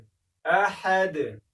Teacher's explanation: د احد ح به هم د ستوني منځ کې وایي